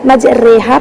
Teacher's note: امالہ کبریٰ میں آواز کا جھکاؤ زیر اور یا کے قریب ہوتا ہے نا. جب ہم امالہ کبریٰ میں مجریحہ پڑھ رہے ہیں تو ہماری آواز زیر اور یا کے قریب مائل ہو رہی ہے، جھک رہی ہے، جو کہ ماہر استاد پڑھ کر فرق بتا سکتا ہے.